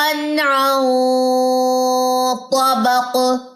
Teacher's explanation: یہ جو غنہ یہ موٹا ہوگا، اخفا جو ہے یہ موٹا ہوگا کیونکہ طا موٹا لیٹر ہے